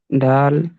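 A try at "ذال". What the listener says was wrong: দাল নয়, দালের মতো দেখতে, উপরে একটা নুক্তা আছে মানে জাল।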